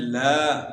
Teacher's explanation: لام کے متعلق بات ہو گئی، زبان کا کنارہ اور سامنے والے اوپر کے دانتوں کے مسوڑے